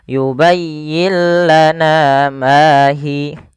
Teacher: apabila ada ada nun mati bertemu lam, suara nunnya kita hilangkan dan kita masukkan langsung kepada huruf lamnya. Sehingga yubayyillah, dan lam di sini dituliskan dengan tanda tasdid karena suaranya masuk kepada huruf lam. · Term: idgham bila gunnah